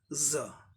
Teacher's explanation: ज नॉर्मल हो गया, ज एस्पिरेटेड, एक्स्ट्रा ब्रेथ देके बोलना है